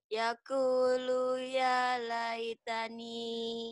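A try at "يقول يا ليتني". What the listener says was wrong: Lu-nya pendek. Yaqulu ya. Jadi sebetulnya dengan lepas suara. Asal kita tahu mana panjang mana pendek. Yaqulu ya. Tuh tekan dipanjang. Yaqulu ya laitani.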